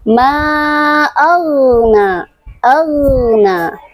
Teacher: Padahal huruf ghin tidak memiliki sifat qalqalah, tapi ghin memiliki sifat ruhawah, yaitu suaranya mengalir, dan memiliki sifat isti'la, yaitu tebal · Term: sifat rhawah